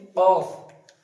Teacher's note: জীবের একদম শেষ অংশ থেকে উচ্চারিত হবে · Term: কফ